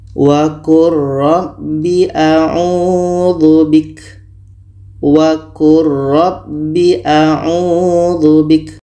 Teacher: Lam mati bertemu ro, ini idgham mutaqaribain. Jadi bunyi lam ini kita masukkan ke ro secara sempurna. Bunyi lam tidak terdengar lagi.